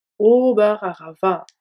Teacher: Le D de vat se prononce T car il est suivi d'un silence.